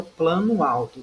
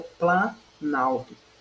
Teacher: Veja que há a perda do fonema O. Quando há essa perda, eu tenho aglutinação.